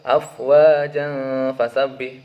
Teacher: Fa yang mana hukum dari baca dari potongan ayat ini adalah ikhfa Hakiki dengan dibaca dengung sepanjang dua ketukan atau dua harakat · Di sini terdapat harokat fathah tain kemudian diikuti oleh huruf fa, yang mana hukum dari potongan ayat ini adalah ikhfa hakiki dengan dibaca dengung sepanjang 2 ketukan atau 2 harokat. Kemudian selanjutnya dalam potongan ayat yang berbunyi sayasla naran dzata lahab, di sini dapat harokat fathah tain kemudian diikuti oleh huruf da.